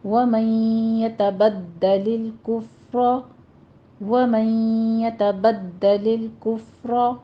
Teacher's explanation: آگے ہے وَمَن يَتَبَدَّلَ، یہاں پہ ہمارے پاس نون ساکن کا قاعدہ ادغام الغنہ ہو رہا ہے اور دال کے اوپر تشدید ادا کریں گے سختی سے، اور لام کے اوپر قلقلہ نہیں کرنا. کفر میں فا پہ حمز کیجیے اور را کو مفخم کر لینا ہے